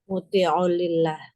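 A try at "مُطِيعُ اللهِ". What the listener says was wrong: Bukan, ini hamzanya wasol loh. Nah, Allahnya dibaca apa? Allahi, Allahu atau Allaha? Mudhof ilaih. Karena mudhof ilaih.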